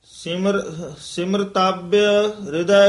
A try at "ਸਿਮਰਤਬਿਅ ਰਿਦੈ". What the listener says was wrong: ਇਸ ਨੂੰ ਸਿਮਰਤਬ ਨਹੀਂ ਕਹਿਣਾ